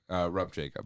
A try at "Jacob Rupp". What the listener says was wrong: It's not rub, though. It's not rub, Jacob.